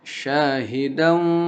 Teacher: dal fathah tain bertemu dengan huruf waw. Itu namanya idgham bi gunnah.